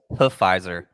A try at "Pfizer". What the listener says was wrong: no, it's Pfizer. P silent.